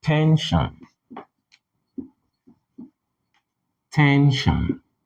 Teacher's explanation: when you say tension tension you naturally raise your tone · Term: stress